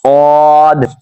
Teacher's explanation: سواد جب ادا کریں گے تو ہم زبان کی نوک اوپر والے دانتوں کے اندرونی کنارے پہ مس کریں گے تو یہ سیٹی بھی نکلے گی اور صحیح ادا ہوگا۔